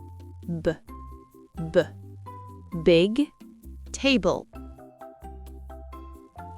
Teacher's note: Le B est sonore. On doit sentir les cordes vocales vibrer dès le début.